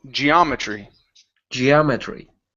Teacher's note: put the stress right there on the O